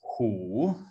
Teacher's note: in today's Mandarin Chinese, it's hu in the third tone